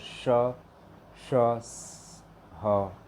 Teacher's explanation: इन चार वर्गों का उच्चारण रगड़ या घर्षण से उत्पन्न वायु से होता है। इसलिए ऊष्मा व्यंजन भी कहते हैं।